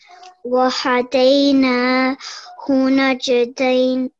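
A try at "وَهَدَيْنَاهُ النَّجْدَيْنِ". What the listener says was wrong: This, I highlighted the noon because... it's a mushaddad letter. You need to pause on there for 2 seconds.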